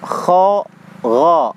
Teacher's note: Huruf gha dengan huruf kha itu di satu tempat, di tenggorokan ujung atas ya.